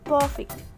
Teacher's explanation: there are some exceptions in the word honest and in the word perfect. Both of them end with strong syllables, but are stressed on the first syllables.